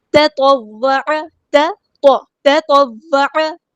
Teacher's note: واو تشدید والا، تو دھیان سے ادا کریں، جماؤ کے ساتھ اسٹرینتھ کے ساتھ ادا کریں تاکہ اس کی شد واضح ہو. تطوع، عین کو مستحل لیکن تھوڑا سا ادا کرنا ہے.